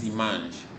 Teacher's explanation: Se nasaliza la A, que es la que está antes de una N.